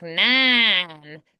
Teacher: So like nine, that's that's a word that is going to be really easy to find the nasality because the n's, the m's, the ings are all going to be more nasal